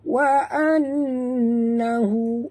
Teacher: Wa annahu, nun bertasydid, wajib dengung, wajib al-gunah.